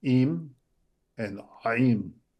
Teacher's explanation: There's a constriction of the muscles around my vocal cords.